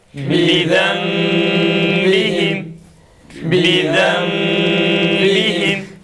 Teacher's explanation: Yalnız dudağımızı tam kapatıyoruz. Tam ne kadar dudak tam kapanırsa iklab tok sesle çıkar,